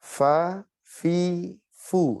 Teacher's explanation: Bunyi desisnya itu harus kenceng ya huruf fa.